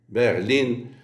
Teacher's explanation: Berlin, avec une voyelle longue accentuée devant une seule consonne.